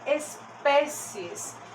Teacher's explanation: pé é a sílaba mais forte aqui dessa palavra